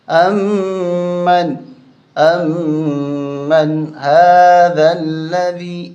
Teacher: یہاں میم پہ غنہ ہوگا، نون پہ غنہ نہیں ہوگا۔ یہاں نون پہ غنہ اس لیے نہیں ہوگا کہ پیچھے حروف حلقی ہا، 6 حرف حلقی ہیں، ان میں سے ہا بھی ہے، تو یہاں غنہ نہیں کریں گے، یہاں غنہ کریں گے۔